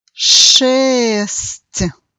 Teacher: nós temos no final um pouco de I inaudível, que faz mudar a pronúncia da letra T para um som um pouco mais suave